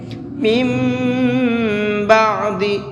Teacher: مم، اس طرح سے، کیونکہ یہاں پر نون ساکن کے بعد میں با ہے، اور نون ساکن کے بعد میں با آتا ہے تو وہاں پر ایک چھوٹا سا میم بنا ہوا ہوتا ہے، جیسا کہ یہاں پر بنا ہوا ہے، تو یہ میم پڑھا جائے گا، نون نہیں پڑھا جائے گا، اور ساتھ ساتھ ناک میں آواز کو چھپائیں گے۔ من بعد، اس طرح سے۔